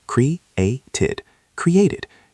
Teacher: If it ends in T, we use the id ending. So this is 3 syllables.